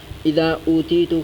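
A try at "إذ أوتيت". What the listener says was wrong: میں سو رہا تھا، ہاں جی، اذا نہیں پڑھنا، اذ اوتی، تو مجھے دی گئی،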